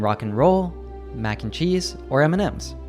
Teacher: We almost always reduce it to just an n sound, like in rock and roll, mac and cheese, or M&Ms.